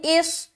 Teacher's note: صاد کو موٹا بھی ادا کریں گے اور ذرا سی سیٹی نما آواز بھی ظاہر ہوگی ، کیونکہ یہ حرف جو ہے نا صاد، یہ حروف مستعلیہ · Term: سیٹی صفت